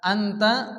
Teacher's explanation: নাকের মধ্যে পরিমাণ গুন্না করে পড়তে হয়